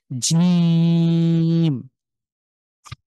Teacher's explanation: শক্ত করে জিভের মাঝখানটা উপরের তালুর সাথে স্ট্রংলি লক হয়ে জিম, খুব শক্ত করে। আমরা যদি কেউ জিজ্ঞেস করে যে, "তুমি কি খেয়েছো?" আমরা বলি, "হ্যাঁ, জি।" তো জি, এই জিটাকে যদি শক্ত করে বলি তাহলে এই উচ্চারণ হবে জিম।